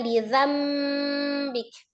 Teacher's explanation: Nah, di situ ada kata lidambik ya dibacanya lidzambik. Nun sukun ketemu dengan huruf ba dari asal kata lidambik menjadi lidzambik disertai dengan ghunah · Merubah bunyi nun sukun atau tanwin menjadi huruf mim sukun. Jadi dari nun sukun atau tanwin dirubah menjadi mim sukun disertai dengan ghunah kamilah yang sempurna. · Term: hukum iqlab